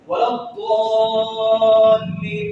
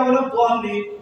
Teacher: مد لازم ہے ولا الضالین, کم سے کم 3 الف کھینچنا ہے